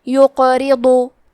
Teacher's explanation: را کے نیچے زیر ہے تو حرف الرا کو پتلی آواز میں پڑھنا ہے · من دا، کلمت یقرضو میں حرف القاف پہ جزم ہے کیونکہ قاف حروف القلقلہ میں سے ہے تو ہم یہ حرف کو ہلاتے ہوئے یہ کلمہ کو پڑھیں گے اور حرف القاف کو موٹی آواز میں پڑھیں گے۔